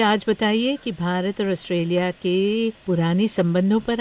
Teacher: Hindi has sort of that long vowels because she's like holding the vowel for a little longer, but it's kind of nasal too